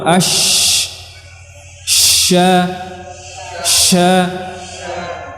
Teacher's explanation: Adapun shin dia kebalikannya, dia memiliki sifat hamas, syakhsun ya. Dia hamas, banyak udara yang keluar